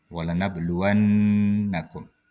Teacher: gunah musyaddah ya Nun bertasdid ya dibaca dengung